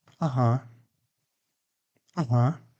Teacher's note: Second is, uh-huh. It's a slightly stronger signal, also with a falling intonation. It means, I understand.